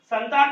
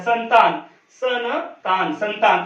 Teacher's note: संतान में जो अम की मात्रा है या जो अनुस्वार लगाया गया है उसका उच्चारण यहां पर जो है न होता है संतान सन तान संतान तो यहां पर आधा न का उच्चारण